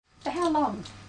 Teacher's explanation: This is a question too, but it has a falling tone. A falling tone is used with information questions.